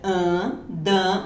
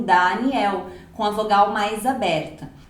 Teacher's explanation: o som é mais nasalado